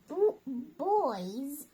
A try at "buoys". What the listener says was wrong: Buoys. We say buoys. Buoys. Buoys. No, it's two syllables. Buoy. It's a buoy. Like buoy. Buoys. Buoys. Not boys. No, buoys. A buoy.